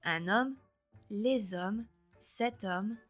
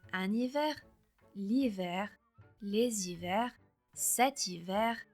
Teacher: la lettre H est ignorée en français et on va directement à la voyelle suivante